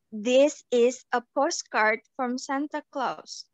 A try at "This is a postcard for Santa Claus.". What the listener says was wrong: For, loh, itu bukan from. Itu for, bukan from. You read it this from.